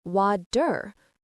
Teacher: Okay, now for another very common American English sound, the T in the middle of words. This T often sounds a bit like a soft D. We call it the flap T. When a T is between two vowel sounds, or between an R and a vowel, it often changes. · It's a flap. Your tongue quickly flaps against the roof of your mouth.